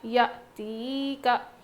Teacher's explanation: حمزہ ساکنہ کے پڑھنے میں جھٹکا ہوتا ہے